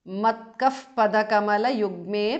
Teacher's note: It becomes manobhrungo because of sandhi. Matkaha visarga changes to upadhamaniya.